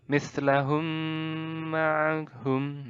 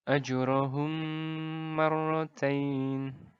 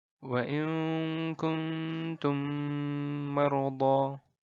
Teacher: Jadi pada huruf mim ketemu mim ini kita tasydidkan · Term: idgham mislain